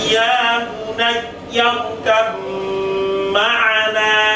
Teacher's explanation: Ini kan ba dengan mim itu satu makhraj, tetapi beda sifat. Sama-sama dari dua bibir.